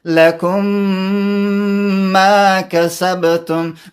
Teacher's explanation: مثلا دا تکلیف دی که موږ داسې ووایو لکم ما نو دا ډیر تکلیف دی چې یو لکم کې منتظر شي هغې مخرج د بل کې به. نو سهولت په خاطر موږ د میم په میم کې مدغم کوو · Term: ادغام